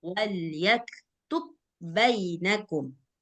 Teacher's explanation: Nah, mim tasydid dan nun tasydid dia wajib bergunnah, sedangkan ba tasydid dia nggak bergunnah gitu. Makanya ketika ba sukun ketemu ba bertasydid nggak perlu gunnah. Nah, maka ba qalqalahnya dihilangkan, langsung masuk ke huruf ba selanjutnya.